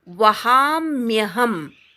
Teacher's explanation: म्यचा उच्चार पूर्ण होऊ दे. मला य जोडलेला आहे, तो य ऐकू येऊ देत.